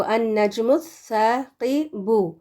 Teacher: یہاں پر الف لام پورے کا پورا ڈراپ ہو جائے گا کیونکہ ہم اس سے شروع نہیں کر رہے نا، اس کو ملا کے پڑھ رہے ہیں پچھلے لفظ سے جو اس سے پہلے ہے.